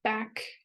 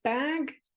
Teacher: German speakers will then say in their English L2 something like back instead of bag, because they have this rule from German that a g sound can never stand at the end of a word.